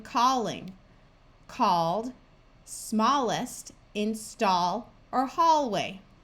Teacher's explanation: of her root word says all like in the word call we can add a suffix to the root word and still keep the broad sound of ah